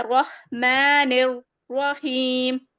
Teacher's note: Next آ گیا ہمارا یہ ہا جو ہے جا کے پھر را میں ملے گا، پچھلے ہی قاعدے کی طرح، ہر رح مانے یہاں پہ را پھر سے موٹا ہے، رح، ہا کا مخرج ادا کریں گے تھروٹ کے ساتھ اپنے، رحمان، میم پہ کھڑا زبر آ رہا ہے، اس کو 2 کاؤنٹ پڑھتے ہیں، رحمان الرحیم، را پھر سے موٹا ہوگا، رحیم، رحیم کوئی نہیں کرے گا، رحیم، ٹھیک ہے؟